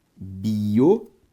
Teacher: Biométrico tem como sílaba tônica a antepenúltima, por isso uma proparoxítona.